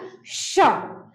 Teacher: जब श बोलते हैं तो घर्षण हो रहा है। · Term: तालव्य श